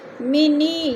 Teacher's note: منی، یا ساکن سے پہلے نون کے نیچے زیر ہے تو ادھر یا مدہ ہو رہا ہے، یا مدہ کو 1 الف 2 حرکات کے برابر کھینچ کر پڑھنا ہے